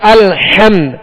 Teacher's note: لہذا اس بات کا خیال رکھیے کہ الحمد، حمد اور میم پر جزم ہے تو یہاں قلقلہ نہیں کریں گے، سکون کے ساتھ ادا کریں گے، جماؤ کے ساتھ ادا کریں گے.